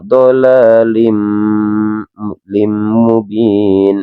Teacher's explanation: Tapi kalau ini mendengung maka dinamakan idgham bihunna. Jadi memasukkan dengan mendengung. Jadi dolalim ditekan dua harakat teman-teman ya.